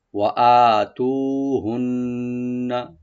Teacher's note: ওয়া ওপেন রাখবেন, হামজা রাইট দিয়ে এক আলিফ টানবেন, তু এক আলিফ টানবেন। আর হুন্না নুন মুসাদ্দেদ, এখানে আমরা একটু ওয়াজিব গুন্না করবো কিন্তু টান হবে না।